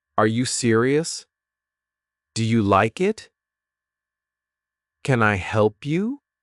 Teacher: First, in American English, there are two main types of intonation. M E r rising intonation when your voice goes up at the end